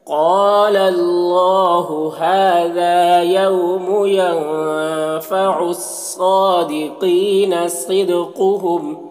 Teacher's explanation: صدقہم صاد کو پر پڑھیں گے حروف مستعلیہ میں سے ہے، دال میں قلقلہ کریں گے · صاد کو پر پڑھیں گے حروف مستعلیہ میں سے، کھڑا زبر ہے ایک الف کے برابر کھینچیں گے. قینا قاف کو پر پڑھیں گے، یہ بھی حروف مستعلیہ میں سے ہے اور یا مدہ ہے ایک الف کے برابر کھینچیں گے.